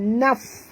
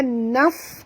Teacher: fa di sini bila dia mati bunyikan hammasnya naf. Ada keluar angin sikit